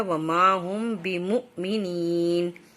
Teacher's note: بمؤ پہ واو کے اوپر حمزہ ہے اور اس کے اوپر جزم ہے تو تھوڑا سا جھٹکا سا لیا جائے گا